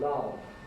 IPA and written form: lʌv (love)